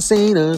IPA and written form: ˈsiːnə (Cena)